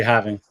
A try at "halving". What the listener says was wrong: It's halving, right? Because there's an L right there, so it's yeah.